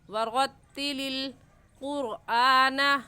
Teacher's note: تو یہ لفظ ایسے پڑھا جائے گا او زد علیہ ورتل. را کے اوپر زبر ہے اس لیے موٹا کر کے پڑھیں گے، اور موٹا کرنے کا طریقہ کہ آپ کے دونوں ہونٹ گول ہو جائے